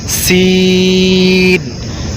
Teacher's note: سین میں سیٹی کی آواز آنی چاہیے، سیٹی کی طرح کی آواز آنی چاہیے تاکہ سا اور سین میں فرق ہو سکے۔